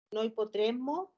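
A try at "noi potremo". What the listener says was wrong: Occhio sempre che, te lo ripeto perché allunghi un po' troppo la M del noi. Potremo. Sì, allunghi troppo la M. Potremo.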